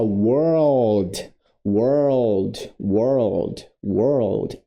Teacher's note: a Esse é o l forte o Dark L do inglês na palavra mundo você vai ter os dois juntos você vai sair do R pro L